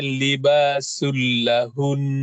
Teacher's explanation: Libasul lahun ini tidak berdengung. Tanwin ketemu dengan lam, maka dia menjadi idgham bila gunna. Berdengung tetapi lebur tapi tidak dengung.